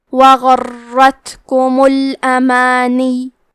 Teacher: کلمت الامانیوں میں یا پہ تشدید ہے تو ہم 2 حرف کے برابر یا کو پڑھیں گے